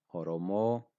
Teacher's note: The first O and Ra sound are short. Oromo, and the Mo is long. Oromo. So the first O and then Ro are short.